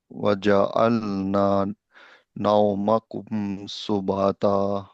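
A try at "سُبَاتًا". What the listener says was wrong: সুবাতা, বা এর সাথে আলিফ আছে। আলিফের ব্যাপারে একটু সেনসিটিভ, কারণ আলিফ, আমি আগেও বলছি যে আলিফ দিয়ে যদি হয়ে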